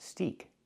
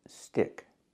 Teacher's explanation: in both words we have to use the short I sound like this is I not e like green beans